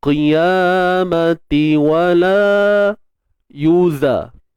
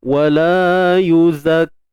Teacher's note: Huruf zai, bukan huruf zal hujung lidah tak payah keluar.